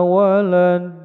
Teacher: Ujungnya dal yang disukunkan, bacaan qalqala kubro memantul besar